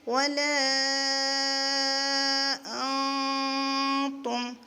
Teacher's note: وا، لام الف مد زبر لا، ولا، حمزہ نون زبر ان، ولا جب ہم ملا کر پڑھیں گے تو نون کی آواز کو چھپائیں گے، اخفا کریں گے،